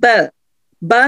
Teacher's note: دونوں ہونٹوں کے اندرونی گیلے حصے جب آپس میں ملتے ہیں تو ب ادا ہوتا ہے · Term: الشفتان